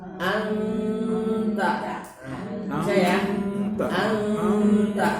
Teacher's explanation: Menyebutkan huruf nun pada makhraj huruf setelahnya. Nun ketemu ta, sentuh huruf ta-nya.